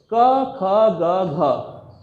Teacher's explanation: तो पहली आपकी जो वर्ण की समस्या है क, ख, ग, घ, इसमें जीभ को बीच में रखना है और गले से आवाज़ को निकालना है, जीभ को मोड़ना नहीं है।